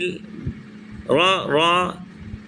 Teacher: زبان کا سیرہ اوپر کے دانتوں کی جڑ کے تالو والے حصے سے را ادا ہوتا ہے، اور را پر زبر یا پیش ہو تو را کو پور پڑھتے ہیں۔